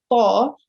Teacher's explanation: you touch the junction between the front upper teeth and the gums. Okay, so just the gums right behind the front teeth, right?